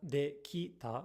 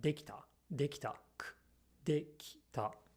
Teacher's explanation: this I gets devoiced because T, t, is an unvoiced consonant